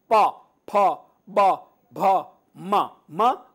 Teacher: प ये ओष है माने होठ आपके बंद होंगे तभी यह वर्ग के पांचों व्यंजन उच्चारित कर पाएंगे